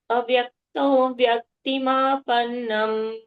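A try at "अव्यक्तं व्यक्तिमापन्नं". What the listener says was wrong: So it won't be plain avyaktam. Avyaktam, a will have a dvitva pressure.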